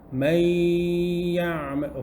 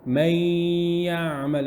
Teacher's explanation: The idgham, the mixing has happened with the tongue not touching the noon, but there's still something left. So it's not full idgham.